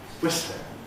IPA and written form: ˈwɪslɪŋ (whistling)